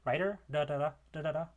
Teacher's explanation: The tap or the flap, which is like in pero, like in Spanish, or in writer, da da da da da da, is the alveolar tap